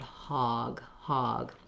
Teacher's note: this is a rounded mid vowel um so it's not an o sound it's not an ah sound it's more of an ah sound hog hog if you use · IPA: /ɔ/, ɔ